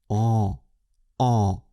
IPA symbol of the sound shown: ɑ̃